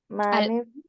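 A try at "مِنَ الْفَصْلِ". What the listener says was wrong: Ya, yang pertama tadi manil, yang kedua minal.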